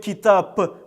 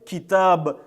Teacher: в арабском языке в конце слов и в конце предложений звонкие согласные не оглушаются. Мы никогда не будем говорить китаб с буквы П в конце, потому что в арабском языке нет такой буквы, а будем всегда говорить китаб.